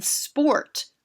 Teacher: r we can think of this as a bossy r or in sport we don't hear the sound of o we just hear or because the o sound is controlled by the r